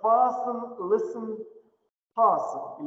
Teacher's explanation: Выпадает «т» в «fasten», «listen», «hasten»